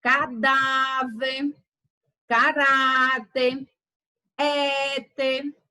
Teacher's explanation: São as palavras paroxítonas são aquelas em que a penúltima sílaba ela é pronunciada com mais intensidade em virtude do acento tônico